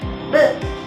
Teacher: Bunyi B adalah bunyi bilabial hambat bersuara.